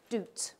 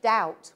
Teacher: doubt and what happened in the inter meaning time is that all of the long vowels in English underwent a shift ooh became ow · how come Scots say doot with the vowel oo, and I say doubt with the vowel ow? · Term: Great Vowel Shift, great vowel shift